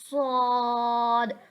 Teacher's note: जिसको हम थोड़ा सा पुर पढ़ेंगे और थोड़ी सी सिटी निकालेंगे।